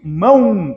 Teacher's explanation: caso aqui eu não vou pronunciar M eu pronuncio mão então esse o tem som de u se ele tem som de u o u é semivogal